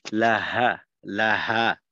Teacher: এখানে যেন ওই হলকের মাঝে চাপ না লাগে। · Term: হায়ের উচ্চারণটা